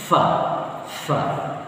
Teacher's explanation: huruf yang berhenti bacaan tapi keluar angin. Lafif, pokoknya lafifun ya, ketika waqaf dia terasa lafif, ada anginnya. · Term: huruf hamas